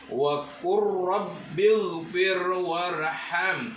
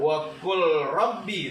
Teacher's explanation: Jadi lamnya ini lam dibaca idgham karena lamnya masuk ke dalam huruf ra. Jadi harus dibaca idgham. · Jadi cara membacanya lamnya harus dihilangkan atau dilebur dalam huruf ra, dimasukkan ke dalam huruf ra karena idgham itu artinya memasukkan.